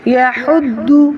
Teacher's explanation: اور داد کو موٹا پڑھیں گے، اور داد پر حرکت ہے تو ہونٹوں کو گول کریں گے۔ یحد، اس کو کھینچنا بھی نہیں ہے، ٹھیک ہے، کہ یہ واو مدہ کی آواز دینے لگ جائے۔